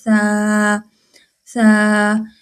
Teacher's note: जुबान की नोक वही जो दांत है ऊपर वाले सामने वाले जो दो दांत हैं इनके किनारों से लग रहा है। यहां पे जड़ों से लग रहा है।